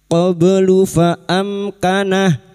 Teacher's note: mim sukun bertemu kaf idhar syafawi, mim sukun dibaca jelas tanpa mendengung